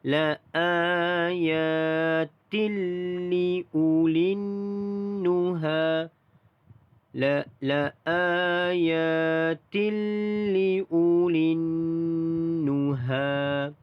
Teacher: Tilli tanwin bertemu huruf lam. Itu idgham bila gunnah, di sini tidak ada dengung.